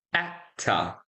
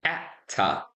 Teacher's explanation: Notice I don't pronounce that R. We have a schwa there.